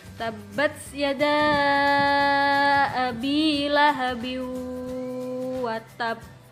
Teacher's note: Diingat-ingat bukan sukun asli. Cara membaca kolkola kubro dengan memantulkan suara dari makhraj hurufnya dengan pantulan yang kuat dan mantap.